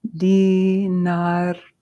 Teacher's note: that's not tha, it's an aspirated T